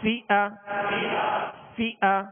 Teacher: فا کو جب ادا کریں گے تو اوپر کے جو دو سامنے والے دانت ہیں اس کے کنارے اور نچلے ہونٹ کا تر حصہ، یہ مخرج ہے، یہ نکلنے کی جگہ ہے فا کے۔